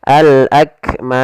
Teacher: Contoh pada lafal akmam, asalnya akmami. Karena kita waqaf, maka mimnya menjadi mim yang sukun, maka dimatikan. Dan sebelum huruf matinya ada huruf alif yang menandakan itu huruf mad, maka menjadi panjang. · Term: mad arid lisukun